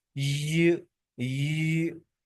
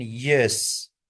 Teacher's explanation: पैेट जो हार्ड हिस्सा है उसको कहते हैं। टंग touches the hard part of the roof. मुंह के ऊपर वाले हिस्से यानी जो सख्त हिस्सा है माउथ माउथ में उसको जाकर टच करती है और यह साउंड पैदा होती है। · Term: पैलेटल